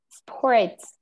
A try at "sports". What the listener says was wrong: You don't need to open your mouth. Sports.